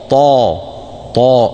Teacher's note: الطاء مفخمه لابد فيها من طا تفخيم الطاء وعدم همسها